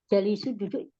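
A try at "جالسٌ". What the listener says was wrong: Jalisun. Tanwin ya. Jangan ini ya. Jalisun.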